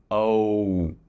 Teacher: The tongue moves in the mouth and the lips move. O. Your lips narrow, your tongue moves forward.